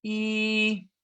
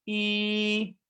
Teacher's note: first tone go up your pitch is higher and keep it steady